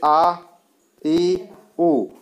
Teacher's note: नाक से या मुख से हवा निकलने के आधार पर 2 प्रकार की है, निर्नुनासिक और अनुनासिक। निर्नुनासिक होते हैं जिनके उच्चारण में हवा केवल मुख से निकलती है, नाक से नहीं